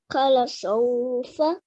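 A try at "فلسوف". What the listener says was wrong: Fala sawfa. This is a fa. Remember, there is 1 dot. Okay, so if there is 1 dot, it's a fa. If there are two dots like this, then it's a qa. Okay, so fa.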